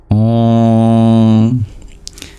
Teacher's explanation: the M with the dot below it is pure nasalization.